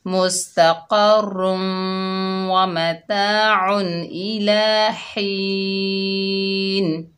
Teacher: दो ज़ेर की तनवीन जो होगी वो ख़त्म कर देंगे वक़्फ़ की हालत में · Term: वक़्फ़ बिल अस्कान